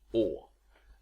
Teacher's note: Swedish o also has protruded lip rounding